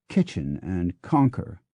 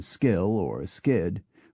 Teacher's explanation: when we use a K sound at the start of a word, we put a tiny puff of breath behind it, as in kitchen and conquer.